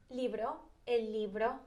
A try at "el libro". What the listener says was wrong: That sounds, it's got a B or a V in it, because it sounds like you're saying a V. A B. El libro. El libro. El libro. Libro. Libro.